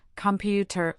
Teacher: computer has stress on the second syllable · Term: syllable stress